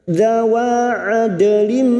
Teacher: dal sukun yang mati asli di dalam kalimat qalqalah syugro, jangan lupa dipantulkan